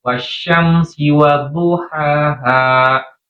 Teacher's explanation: sifat tafasyinya udara menyebar di rongga mulut harus ada.